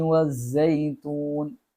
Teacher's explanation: സായി അത് തേനീച്ചയുടെ മുരണ്ട ശബ്ദമാണ്